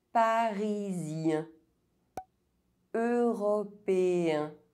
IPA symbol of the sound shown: ɛ̃